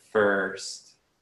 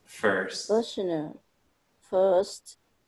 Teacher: the vowel sound uh together with the r sounds like er